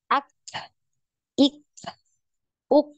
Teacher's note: huruf Kaf ini tertahan juga suaranya jadi tidak punya aliran suara nah hanya ada aliran nafas ya Nah tertahan dulu suaranya